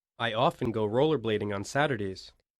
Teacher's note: stress part a listen to the syllables stressed in each sentence notice that the adverbs of frequency are stressed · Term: sentence stress